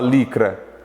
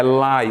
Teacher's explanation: Você não fala licra, é lai, ou seja, aqui é um ditongo, tá? Esse Y está representando dois sons, 2 fonemas, o A e o I.